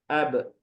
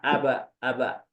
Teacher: bukan sekedar up saja tapi ada suara pantulannya yaitu Qalqalah